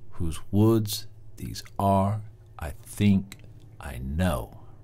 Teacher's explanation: words are think and know those words are emphasized they're accented they are stressed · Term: tetrameter